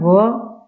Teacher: दंतोष्ठ यानी ऊपर के दांत प्लस नीचे का ओष्ठ, दंतोष्ठ। दंतोष्ठ कौन सा वर्ण है, व।